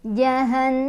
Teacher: Jadi cara bacanya berdengung dan dengungannya ditahan, boleh 2, boleh 3, boleh 4 ketukan. Jahan sampai kerasa ke hidung. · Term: gunnah musyaddadah